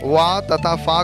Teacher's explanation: वा तथा फा का उच्चारण करते समय नीचे का ओष्ठ ऊपर वाले दांतों को स्पर्श करता है, अतः इन्हें दंतोष्ठ व्यंजन भी कहा जाता है।